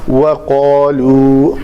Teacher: قاف کو پر کریں گے، قالوا نہیں ہوگا، وہ قالوا ہوگا۔